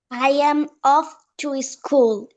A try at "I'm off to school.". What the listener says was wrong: আচ্ছা, আই এম না বলে আম বলবো, ঠিক আছে, আম অফ